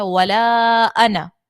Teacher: پھر اس کے بعد دیکھیں تو یہاں پر الف مدہ نہیں ہے، یہاں پر اس الف کو ہم نے نہیں پڑھنا ہے، انا کے الف کو نہیں پڑھیں گے جو کہ ہم وہاں پر صورتیں پڑھ چکے ہیں قاعدے کے اندر. تو یہاں پر انا کے الف کو نہیں پڑھنا ہے، جلدی سے پڑھنا ہے